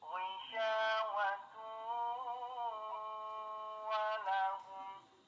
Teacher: Tanwin bertemu huruf wawu, hukumnya idgham bi gunnah. Yaitu memasukkan bunyi tanwin ke huruf wawu disertai dengung seukuran 2 harokat.